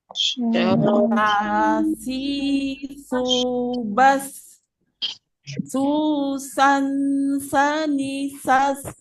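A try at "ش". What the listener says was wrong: Masih terdengar seperti huruf sa, ya. Jadi dia seolah-olah lidah kita itu agak seperti melengkung dia. Sya, sya. Tidak dikeluarkan juga, Bu, tapi di dalam bagian tengah lidah seperti seolah-olah menyentuh bagian atas langit-langit. Kalau tadi dia jim itu kan betul-betul menyentuh. Kalau ini dia seperti menyentuh tapi tidak menyentuh. Seperti menyentuh atau agak lebih dekat. Jadi sya, sya,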